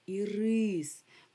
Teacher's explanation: Тобто наголос падає на и